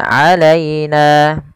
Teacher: lembutkan pelafal ya yang didahului dengan fathah karena ia bacaan lin